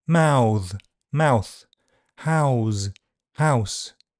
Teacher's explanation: In these examples, the noun is voiceless and therefore shortened. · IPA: [ɐːʊ]